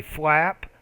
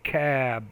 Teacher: if the p's at the end this is a voiceless consonant right the vowel's a little bit shorter when the b is at the end of voice consonant the